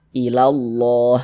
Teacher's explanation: Huruf lamnya dibaca idgham sehingganya ini dari la langsung masuk ke sini ilallah seperti itu. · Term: alif lam syamsiyah